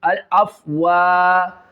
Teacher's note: الف مد ہے اس کو کھینچ کے پڑھنا ہے ایک الف